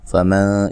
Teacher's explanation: نون ساکن کا اخفا مع الغنہ ہے، باریک اخفا ہے